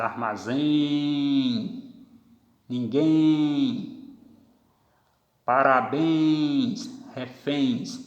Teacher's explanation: Então elas têm a tonicidade na última sílaba, são oxítonas.